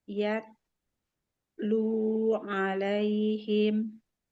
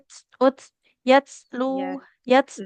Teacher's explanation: Oke, untuk syiddahnya sudah terpenuhi, tapi hamsnya belum. Jadi huruf ta itu kan dia tertahan aliran suaranya, tapi nafasnya mengalir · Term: sifat hamsnya